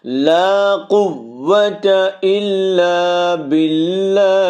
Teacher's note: لا الف مد ہے، اس کو 1 الف کی مقدار کے اندر کھینچیں گے۔ قوت، قاف کو ہم نے کھینچ کے مارنا ہے واو کے اوپر، پھر واو کو ادا کرنا ہے۔